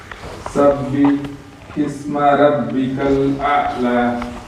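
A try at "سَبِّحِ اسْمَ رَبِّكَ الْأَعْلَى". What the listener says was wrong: ஹா வந்து சின்னதாக இருக்குது. ரப்பிக் அப்படிங்கிறது ரப்பிக், அது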